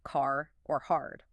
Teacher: You are also training the erotic R, meaning you aggressively pronounce every single R sound at the end of words like car or hard